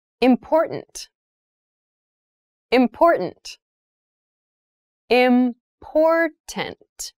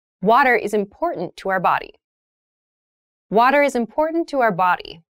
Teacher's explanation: that first t is actually reduced it sounds more like a d in fast speech